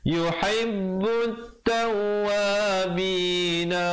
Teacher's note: alif lam syamsiah di situ, lamnya tak dibunyikan. · ta dengan waw berdua-dua bersabdu, tekankan. Yuhibbut tawwabina wa yuhib nak keluar jangan lambat.